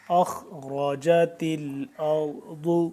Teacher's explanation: خوا پر پڑھیں گے، را پر پڑھیں گے، تا پھر باریک ہے ، اسی طرح را پر، ضاد بھی پر، اخرجت الارض، وقفا